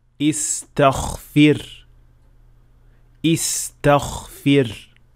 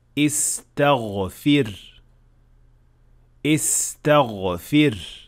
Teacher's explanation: some learners tend to make ghain also voiceless. The result is that it will sound more like kha rather than ghain